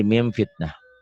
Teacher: Bila nun mati atau tanwin bertemu fa, bunyinya berubah menjadi m. Akan tetapi mulut tidak tutup rapat, masih ada udara yang keluar ketika membacanya. Min jadi mim fitnah.